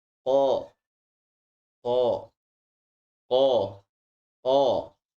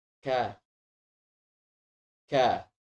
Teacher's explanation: huruf Kaf ini makhrajnya dia tetap dipangkal lidah tapi dia agak sedikit maju